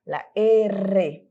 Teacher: Lembrando que o R vibra, né?